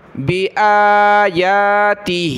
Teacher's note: او کذب بآیاتی، حمزہ کھڑا زبر آ، یا کھڑا زبر یا، دونوں کو ایک ایک الف کی لمٹ میں کھینچیں گے، کھڑا زبر ہے اور ہا کے نیچے کھڑی زیر ہے تو اس کو ایک الف کی لمٹ میں ہم نے نیچے کی طرف کھینچنا ہے۔